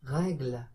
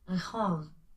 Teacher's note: the back of the tongue touching, or almost touching, the soft palate, that is the back part of the roof of your mouth.